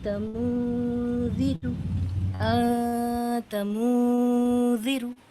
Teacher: نون ساکن کی آواز کو دونوں جگہ چھپا بھی رہے ہیں اور غنہ بھی کر رہے ہیں، اور یہ غنہ 2 کاؤنٹس یا 2 حرکت کی برابر یا تھوڑی دیر ناک میں روک کر پڑھ رہے ہیں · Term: اخفا